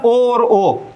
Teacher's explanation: ये कंठोष्ठ से उच्चारित होते हैं ओ और ओ।